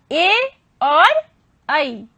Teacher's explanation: ए और ऐ का उच्चारण होता है कंठ और तालु से